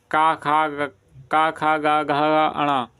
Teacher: उच्चारण के स्थान पर का वर्ग को बोलते कंठ